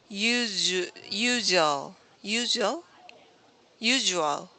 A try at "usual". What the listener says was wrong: This is the sound zh, zh. Usual, usual. Usual. So I think you said it right, but it wasn't prominent enough, so it can be confused with another sound.